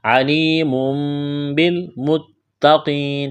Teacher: تنوین کے بعد با ہے، یہاں پر اقلاب کریں گے، آواز ناک میں چھپائیں گے۔ علیم بالمتقین، تا میں سختی کریں گے، تشدید ہے، قاف کو موٹا کرنا ہے، یا مدہ ہے، ایک الف کے برابر کھینچنا ہے، وقف کریں گے، نون کو ساکن کریں گے۔